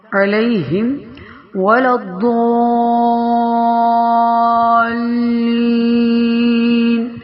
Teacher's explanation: داد ہے اور اس کو بہت ہی موٹا پڑا جاتا ہے اور اس کے اوپر بڑی مد بھی ہے، تو لہٰذا اس کو کھینچ کر آگے شد کے ساتھ ملاتے ہوئے پڑھنا ہے.